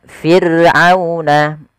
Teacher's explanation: ra sukun didahului dengan huruf kasrah, maka dia dibaca dengan ra tarqiq, ra yang tipis, tidak boleh ditebalkan. Tidak boleh fir'auna, tidak boleh.